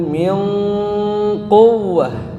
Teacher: ada ikhfa'nya, harus disertai dengan gunnah.